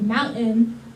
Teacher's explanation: Often you either have what's called an unreleased T, where your T just sort of goes up and stays there, or what's going on with mountain is you get a glottal stop. So the glottis is the space between your vocal folds and your larynx and your Adam's apple.